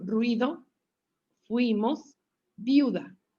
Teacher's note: la combinación débil débil forma un diptongo una sílaba y el acento recae en la segunda letra